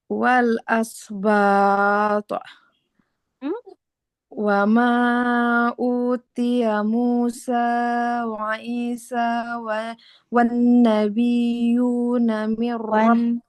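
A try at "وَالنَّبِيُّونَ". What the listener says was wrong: Wan nabiyyuna huruf ya-nya bertasydid ditekan ya. Wan nabiyyuna min rabbihim.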